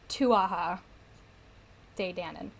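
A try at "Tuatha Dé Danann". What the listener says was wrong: Tuatha De Danann? TH does not make a TH sound in Irish. Tuatha De Danann. J.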